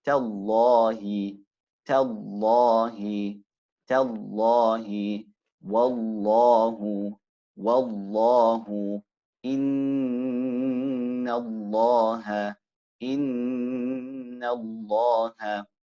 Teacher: The lam, when it will be recited tafkhim, is in the glorious name of Allah when preceded by a fatha or a dhamma.